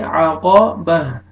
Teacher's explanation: कौफ को मोटा करके पढ़ेंगे